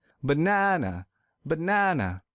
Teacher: banana this is incorrect because i don't stress the second syllable so to fix this i will stress the second syllable real hard